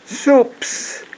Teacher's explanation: The S does not come from your vocal cord.